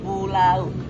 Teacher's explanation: Contoh kedua, pulau mengandung diftong AU. Jadi bunyi berpindah dari vokal A ke U.